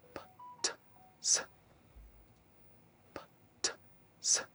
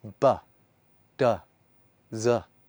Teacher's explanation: These are the consonant sounds you make without using your vocal cords. Sounds like P, T, and S, which you make just using your breath and your lips. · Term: voiceless consonants